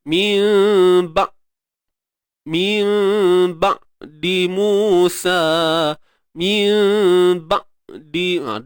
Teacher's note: huruf ain jaga sifat tawassut. Okey, suara yang tidak terlalu tertahan, tidak mengalir. Tidak tertahan, tidak mengalir.